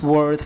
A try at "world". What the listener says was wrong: It's world, not word.